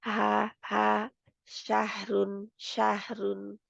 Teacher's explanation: और हा की आवाज बहुत नरमी के साथ रगड़े के बगैर